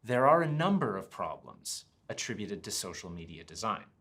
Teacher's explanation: In this sentence, you can see there are is all linked together, and so is number of. So we get this one sound that sounds like this.